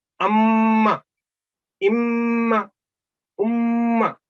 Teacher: ये दो सेकंड तक आपने होंठों को मजबूती से मिला के रखना है, तो मीम अदा करना है। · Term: मीम मुशद्दद